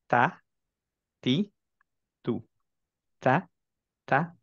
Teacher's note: just টিপটা touch করবে অনেকখানি অংশ টাচ করবে না টাঙের আর্টিকুলেশন পয়েন্টে এটা করার জন্য আমরা সাইডওয়াইজ মুখটাকে ওপেন করে ফেলবো স্মাইলি ফেস